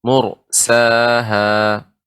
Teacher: mursaha seperti tertahan karena ra-nya tebal.